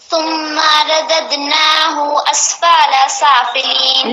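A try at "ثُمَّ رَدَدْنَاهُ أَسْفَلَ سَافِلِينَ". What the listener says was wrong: لیکن زبر زیر پیش کو نہ کھینچیں. ثم نہیں، اسفلا نہیں، ثم اسفل.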